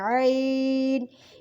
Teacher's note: اس کو ہم درمیانی حلق سے پڑھیں گے